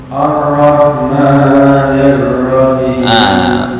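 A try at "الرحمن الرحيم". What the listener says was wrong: Tafkhim dipertebal lagi. Ar-Rahmanir-Rahim. Bukan Ar-Rah kenyang. Ar-Rahmanir-Rahim. Ini saya bukakan di mana makhraj ra. Nah, ini ra, di mana makhraj ra? Nah, ini ra mufakham.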